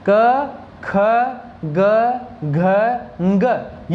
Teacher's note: ये पांचों के पांचों वर्ण कंठ की सहायता से बोले जाते हैं।